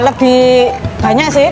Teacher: dengan menambahkan bunyi nasal di depan konsonan B